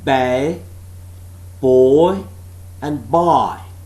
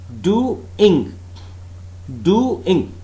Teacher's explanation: the vowels in doing are two different vowels. They are separate vowels. They are not diphthongs. Do, d, u, I, ing.